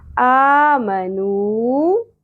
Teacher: نون پیش، واو ساکن، حرف مدہ ایک الف کے برابر کھینچنا ہے